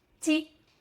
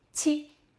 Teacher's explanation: Again, further forward, tongue flat, like ch ch. The difference between G and C is that extra breath of air on C.